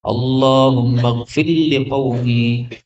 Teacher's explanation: Ini ra ketemu lam bisa idgham ya.